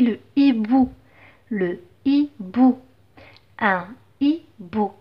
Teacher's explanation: Donc puisque c'est un H aspiré, donc il interdit la liaison.